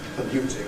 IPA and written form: pəˈljuːtɪŋ (polluting)